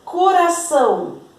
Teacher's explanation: coração são é a sílaba tônica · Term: oxítona